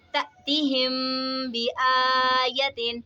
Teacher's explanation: میم ساکن ہے، میم ساکن کے بعد حرف با رہے تو یہاں پہ اخفاء شفوی ہوگا، یعنی ہم نے غنہ کر کے پڑھنا ہے اور کھڑا زبر اس کو ہمیشہ کھینچ کر پڑھا جاتا ہے۔